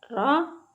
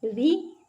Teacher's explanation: रा के ऊपर ज़बर था तो रा को हमने पुर पढ़ा, रा के नीचे ज़ेर थी तो रा को हमने बारीक पढ़ा